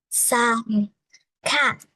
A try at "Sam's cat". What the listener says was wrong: Sam's, don't forget the S. Sam's cat.